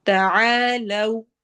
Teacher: الف مدہ کرتے ہوئے لو میں ہونٹ ہمارے گول ہوں گے